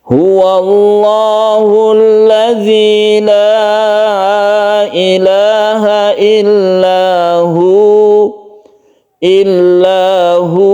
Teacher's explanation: tidak perlu ditekan ke huruf wawu karena tidak ada tasydid di sini, sukun wawu saja, sehingga hu ini hanya dipanjangkan 1 alif.